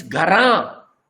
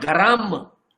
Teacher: here the nasalization comes at the end of the word. So it is Gara.